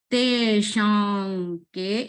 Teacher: Here the sound is sh. By folding the tongue with the help of our palate, upper palate, you have to sound like sh.